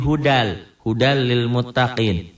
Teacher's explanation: bunyi n-nya hilang melebur pada huruf sesudahnya tanpa disertai dengan dengung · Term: idgam bila gunnah